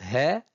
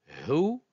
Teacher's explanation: c'est le h aspiré de l'anglais c'est he c'est le H prononcé avec Fath